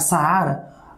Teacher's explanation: Eu pronuncio tão forte a primeira vogal quanto a segunda. Assim como a palavra saúde. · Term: hiato